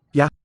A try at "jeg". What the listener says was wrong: No. Short vowel. And lower than it looks from the spelling.